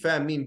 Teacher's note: En de andere 3, fa, min, ba, komen allemaal uit je lippen. Dus niks uit je keel, niks uit achterste van je tong, niks.